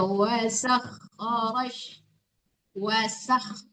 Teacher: Bukan wasyak tapi wasak. Tipiskan sinnya. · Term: sin ya tipis